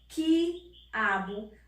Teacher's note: Porque eu não pronuncio a vogal U, eu só falo I